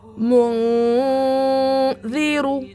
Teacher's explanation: نون کی آواز کو ناک میں چھپانا ہے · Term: اخفا